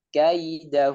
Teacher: dengan mengucapkannya menjadi huruf e misalnya juga kurang tepat jadi tetap ya nya diucapkan dengan sempurna dengan menurunkan rahang bawah tapi tanpa dengan tekanan yang kuat